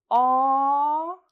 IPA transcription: ɔ: